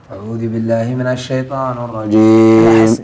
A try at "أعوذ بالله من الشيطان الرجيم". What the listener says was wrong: لحظة أنا أحسكم تقول أعوذ وتقول أعوذي